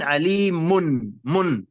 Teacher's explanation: هناك نون زائدة بعد الميم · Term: تنوين